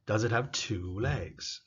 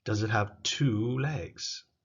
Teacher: Remember we talked about a little bit higher volume, a little bit higher pitch, but also longer. The two, the key focus is two. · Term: stress